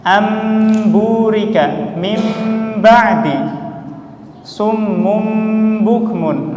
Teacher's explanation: kita tutup bibir kita, kemudian kita tekan ya kan, kita tekan kuat-kuat, maka keluar huruf mim yang jelas. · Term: itbaq